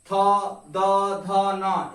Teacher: ये सभी आपके त वर्ग वाले जितने भी आपके वर्ण या अक्षर हैं सभी का स्पर्श आपका दंत से होता है